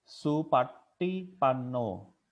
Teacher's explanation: Jadi pakai T yang ditekuk ke atas ya, ke atas langit-langit.